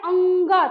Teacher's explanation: क्योंकि हम जब भी अंग बोलते हैं तो लगता है अंग कंठ से, देखते हो आपने अभी पढ़ा कि कवर्ग का उच्चारण स्थान कंठ दिया है, कंठ से तो हो ही रहा है, लेकिन हम जब बोलते हैं अंग तो लगता है कंठ से मेरी ध्वनि कहाँ जा रही है, नाक में। कहाँ जा रही है, नाक में, यानी मुख से नाक में, अनु से नाक में, नासिका में। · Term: अनुनासिक